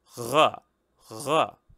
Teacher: this sound is the usual uvular trill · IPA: ʀ